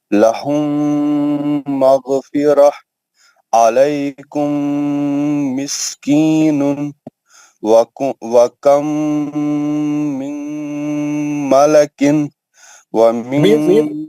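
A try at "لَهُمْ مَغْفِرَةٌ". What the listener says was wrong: دوسرا غنہ بھی میم کا ہی ہے، نون کا آواز نہیں آنا. نون ساکن کے بعد ادغام ہے نا، نون کا آواز کئی کو آیا آپ کو؟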